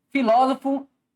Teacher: a sílaba tônica está na antepenúltima sílaba então o que que nós temos aqui nós temos uma proparoxítona